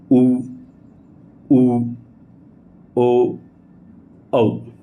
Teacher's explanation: जिन स्वरों का उच्चारण करते समय ओष्ठ का आकार गोलाकार होता है, उन्हें हम वृत्ताकार स्वर कहा जाता है।